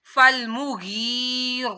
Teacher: रा के ऊपर खड़ा माद था तो रा को मोटा भी पढ़ना है। · फल मुँह गैन या जेर गी। या साकिन से पहले जेर आ रही है तो इसको एक अलिफ के बराबर लंबा किया